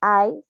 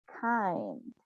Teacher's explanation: the sound I, that is a diphthong, wide and front closing